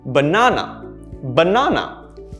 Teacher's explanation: looking at the word banana notice how my sound goes up and down